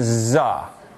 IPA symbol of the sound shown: z